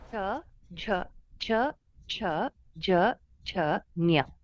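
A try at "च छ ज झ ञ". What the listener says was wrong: Yes. Okay, good.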